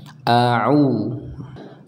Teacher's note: Kalau huruf Ainnya kita keluarkan dari tengah tenggorokan kita